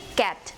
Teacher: It is described as a voiceless velar plosive consonant.